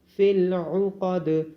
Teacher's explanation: عین کی آواز گلے سے آئے گی، قوف کو موٹا پڑھا جائے گا اور دال پہ قلقلہ کیا جائے گا